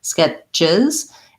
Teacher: my tongue lifts up to the t position and then pushes out for the ch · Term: ch sound